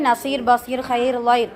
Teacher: ரா சுக்குூன் பெற்று அதற்கு முன் சுக்குூன் பெற்ற யா இருந்தால், அந்த ராவையும் மெல்லினமாக ஓத வேண்டும்.